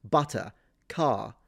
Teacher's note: In this situation, the R at the end is dropped.